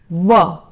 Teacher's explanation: दंत प्लस ओष्ठ मतलब दांत और लिप्स या होठ